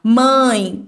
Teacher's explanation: ditongo nasal o o ar vai sair tanto pela boca quanto pelo nariz